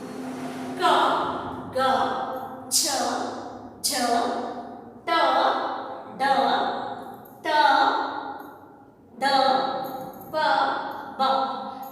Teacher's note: ಈ ಅಕ್ಷರಗಳನ್ನ ಉಚ್ಚಾರ ಮಾಡಬೇಕಾದರೆ ನಾವು ಕಡಿಮೆ ಉಸಿರನ್ನು ತೆಗೆದುಕೊಂಡು ಮಾಡ್ತೀವಿ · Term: ಅಲ್ಪ ಪ್ರಾಣಾಕ್ಷರಗಳು